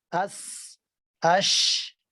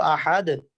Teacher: شین کے اندر یا سین کے اندر صفت شدت نہیں پائی جاتی. اب دیکھیں شدت میں تو کیا تھا, آواز فوری بند ہوتی ہے.